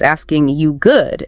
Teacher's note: That little unstressed R just poof, it's gone.